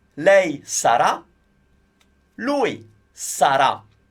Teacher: Again, stress the ra, otherwise you're saying the name Sara if you don't get the stress right.